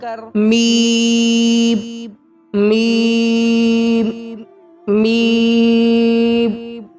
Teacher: दोनों होठ की खुश्की से मिलकर मीम मीम मीम अदा होता है।